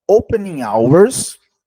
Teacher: você não pronuncia o H com som de casa